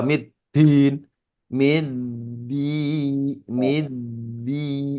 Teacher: Awas dalnya jangan terlalu kedorong kayak orang Jawa